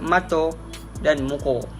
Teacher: Daripada dua kata tersebut, kebanyakannya mengalami perubahan di akhir kata di mana dalam bahasa Melayu, perkataan tersebut diakhiri dengan fonem vokal. Namun dalam dialek Kelantan, kebanyakannya kata diubah kepada fonem vokal belakang separuh sempit